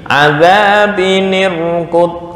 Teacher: Ini sukun mati, ini mati. Maka harus ada harokat penolong, yaitu kasrah.